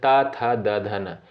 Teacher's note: त वर्ग के अंतर्गत जो वर्ड आते हैं जैसे त थ द ध न इनका उच्चारण साथियों कहां से होता है? दंत से होता है